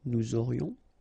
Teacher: Nous aurions, final S not pronounced, and then you've got this liaison, nous aurions.